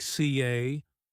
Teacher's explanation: British accent tends to soften the R, so car sounds more like CA